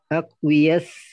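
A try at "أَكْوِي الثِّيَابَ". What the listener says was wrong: Dia yaknya itu sukun ya. Kecuali kalau ada dom amil nasab baru dibaca aqwiya. Tapi kalau nggak ada maka aqwi biasa. Aqwis ya, langsung masuk ke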